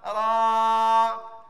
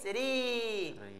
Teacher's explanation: kalau barisnya A dibaca tebal. Kalau dibaca barisnya I, bacanya tipis.